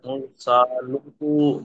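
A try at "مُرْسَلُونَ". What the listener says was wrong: নুনটা ধরবেন তো সাকিন করে এটা করেন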